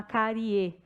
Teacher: Do baixo, porque a vogal é a mais alta, do baixo para o mais alto, crescente, e o I eu faço o som só com ar pela boca, oral